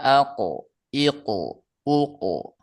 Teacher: memantulkan bunyi huruf qalqalah ketika sukun tanpa pengaruh harakat ketiga